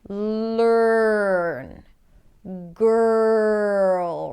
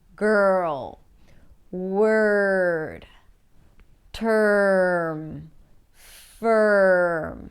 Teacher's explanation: you're practically shifting from the consonant before the R to the R directly skipping over the vowel sound. Technically it's a vowel letter. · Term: special vowel sound